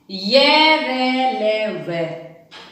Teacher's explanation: सपृष्ठ स्पर्श करना, यानी कि कम स्पर्श करना, कि जिन वर्णों के उच्चारण में जीभ मुख के जो भिन्न भिन्न भागों को छूती है लेकिन बहुत हल्का, बहुत थोड़ा सा। जिन वर्णों का उच्चारण करते हैं तो उनका उच्चारण करते वक्त जीभ बिल्कुल हल्की सी मुख के भागों को छुएगी, वह होंगे ईशत सपृष्ठ वर्ण।